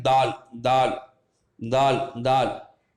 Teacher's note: அந்த புள்ளி உள்ள எழுத்து கொஞ்சம் அதை விட கொஞ்சம் லேசாக சொல்லணும். தால், நம்மளுடைய நுனிநாக்கு நுனி பல்லில் பட்டு தால் அப்படின்னு சொல்லணும்.